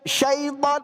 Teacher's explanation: ketika mengucapkan huruf shinnya yaitu tafasyi ya, harus membuyar gitu kan